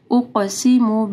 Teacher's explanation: قاف کو موٹا پڑھنا ہے اور قاف کے اوپر قلقلہ ہوگا